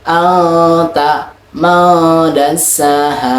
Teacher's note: Hukum ini terjadi apabila nun sukun atau tanwin bertemu salah satu huruf ta, sa, jim, dal, zal, zai, sin, shin, sod, don, ta, za, fa, qaf, kaf, maka dibacanya disamarkan dengan dengung 2 harokat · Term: Ikhfa hakiki